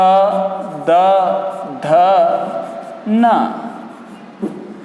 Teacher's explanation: द ध न इनका उच्चारण स्थान है दांत